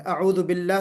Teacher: तो बिस्मिल्लाह के लाम को पुर नहीं पढ़ना है, बल्कि हमको बारीक पढ़ना है। अऊदु बिल्लाह के लाम को बारीक पढ़ना है